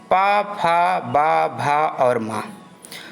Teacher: पा वर्ग ओंठ से उच्चरित होता है